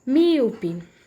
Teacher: a gente vai também vai ter a palavra proparoxítona que comanda a antepenúltima sílaba da palavra é a tônica